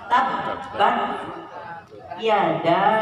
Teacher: Tabbat jangan lupa ya, baknya ditasjid.